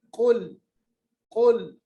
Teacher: काफ का मखरज जबान की जड़ ऊपर के तालुक के साथ मिलाएंगे। कुल मोटा पढ़िएगा।